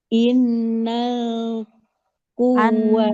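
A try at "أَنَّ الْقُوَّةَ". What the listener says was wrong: Anak harokatnya di bawah, di bawah, harokatnya di atas. anak, bukan innal, annal.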